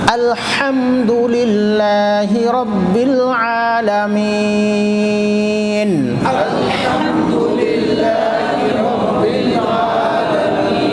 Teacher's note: اللہ کا ہا چھوٹا ہا ہے اس کا نرم کے ساتھ، اور بیچ حلق سے جو نکلتا ہے ہا وہ بڑا ہا، حلق سے بیچ سے وہ ہا۔